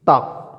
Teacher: ठीक है, जैसे कि ता, जीभ दांतों से आगे लगेगी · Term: त वर्ग